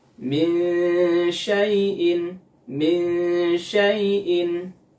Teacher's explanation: Ada nun sukun ketemu dengan huruf shin, maka gunnahnya harus dipanjangkan, yaitu gunnah kamilah.